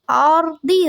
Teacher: آردی را کو پر کریں گے کیونکہ را ساکن ہے